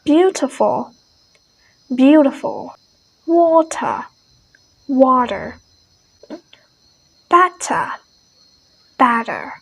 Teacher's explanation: american change the t sound into d